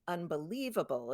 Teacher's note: Unbelievable, it's on the third syllable.